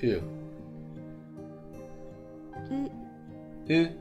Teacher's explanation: Um, it's very, I don't know, I want to say flat. It's not like you're ascending in pitch or descending in pitch or anything.